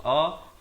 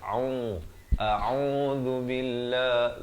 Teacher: Hamzah dipangkal kerongkong a, ain berbaris dhammah di pertengahan kerongkong dengan dua harakat. A'udzu billah, zu di ujung lidah.